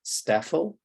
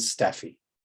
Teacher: it's more of an I in staffel and it's more of an E in staffy